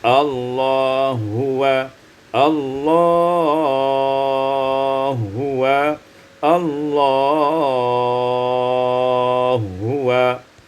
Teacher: idghamul ha fil ha, diidghamkan ha pada ha menjadi Allah huwa, Allah huwa, Allah huwa.